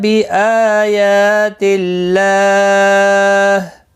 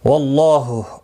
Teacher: اللہ کا لام یہاں پر زیر کی وجہ سے باریک پڑھا گیا اور یہاں پر زبر کی وجہ سے پر پڑھا جائے گا. اس کے اوپر کھڑی زبر بھی ہے، 1 الف کی مقدار کے برابر کھینچ کر پڑھیں گے.